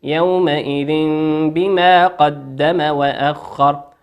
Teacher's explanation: تنوين أتى بعده حرف الباء، والباء من حروف الإقلاب تقلب الباء ميما